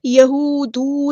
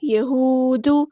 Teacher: لیکن دال کی پیش کو لمبا نہیں کریں گے، حرکات کو ہم لمبا نہیں کرتے ہوتے، یہودو نہیں، ٹھیک ہے، یہود۔